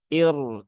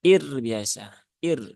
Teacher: Nah, dan irnya karena dia wakof, maka roknya sukun, dia berhubungan dengan hamzah yang kasroh, maka roknya dibaca tipis, ya. Jadi bukan dibaca tebal, ir, tetapi ir biasa.